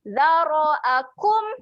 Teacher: huruf zal keluar jeli lidah. Zara'akum. Ni pun sama bunyi dia adalah kum.